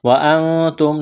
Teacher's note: نون ساکن کے بعد تا ہے، یہاں پر اخفا کریں گے، آواز ناک میں چھپائیں گے. میم ساکن کے بعد تا ہے، یہاں پر اظہار کریں گے.